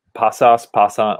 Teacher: you kind of move the stress to the first syllable